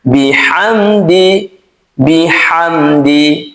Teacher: Mim sukun setelahnya bukan huruf mim dan huruf ba. Maka huruf mim di sini dibaca jelas tanpa ghunah.